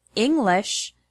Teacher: the word English has the stress on the first syllable, ing.